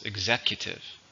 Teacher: Stress is on the second syllable.